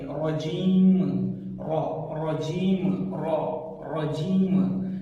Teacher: را کے اوپر فتحہ آیا ہوا ہے، مطلب زبر آیا ہوا ہے، تو اس را کو ہم موٹا پڑھیں گے۔